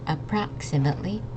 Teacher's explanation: Remember there's this X here, so it makes a X sound, like a K and the S